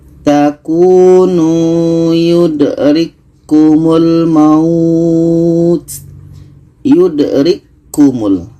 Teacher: K ini asalnya berangin maka kita masukkan ke huruf yang kedua. Tidak jadi anginnya. · K ini terus masuk ke K yang kedua